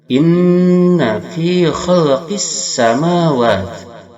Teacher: Khalqis alif lam syamsiyah wajib idgham. Lamnya tidak dibaca tapi dimasukkan pada sin.